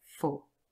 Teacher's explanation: for officially has a long o, but usually this is not a stressed word, and so in its weak form it would be represented by schwa